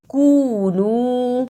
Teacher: اسے کنو نہیں پڑھنا، کاف پیش واو کو پہ بھی تھوڑی سی دیر لگانی ہے، نون پیش واو نو اس پہ بھی تھوڑی سی دیر لگانی ہے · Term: واو مدہ